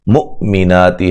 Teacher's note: حمزہ کو جھٹکے سے ادا کریں گے، نو مدہ ہے، وقفاً بڑی مد کے ساتھ پڑھ سکتے ہیں۔